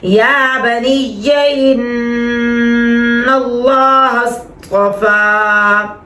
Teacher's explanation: اللہ کا لام موٹا کیونکہ پیچھے جو ہے وہ زبر ہے